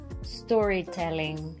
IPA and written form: ˈstɔː.riˌtel.ɪŋ (Storytelling)